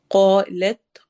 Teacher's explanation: قوف کو ہم ہیوی پڑھیں گے، موٹا پڑھیں گے، اور ساتھ ہی الف کو بھی ہم ہیوی کر کے، موٹا کر کے پڑھیں گے۔